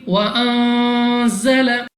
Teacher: नून साकिन के बाद ज़ा हरूफ इख्फा में से है, गुन्ना करके पढ़ेंगे